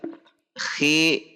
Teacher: Khi tidak khi tapi khi dengan tidak terlalu mendahak, biasa saja, yang penting makhrajnya sama dengan ghain.